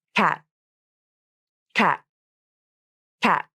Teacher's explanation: Notice that my tongue tip came up for the T consonant, but it didn't release. · When the T and D consonants come at the end of a word or syllable, and the next word or syllable begins with a consonant, it's very common for native speakers to hold the release of the T or D consonant. This means the tongue tip comes up to the alveolar ridge, and the air is stopped there and in the throat, but you don't release the air or the sound. Instead, the tongue tip stays up, and you stop the sound right there. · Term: unreleased stop consonant